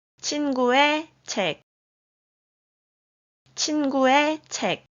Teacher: 의 makes e sound when 의 is used to connect two different words